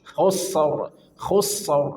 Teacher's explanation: Jadi karena sin punya sifat rakwah maka alirkan suara